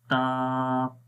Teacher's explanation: زبان کی نوک اوپر والے سامنے کے دانتوں کی جڑوں پر لگ رہی ہے، تو اس وجہ سے تا ادا ہوتا ہے، یہ اس کا مخرج ہے۔